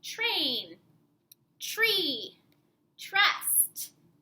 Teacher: sometimes TR actually makes the CH sound like in train tree trust